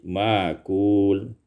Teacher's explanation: ibdalul hamzati alifan, tukarkan hamzah alif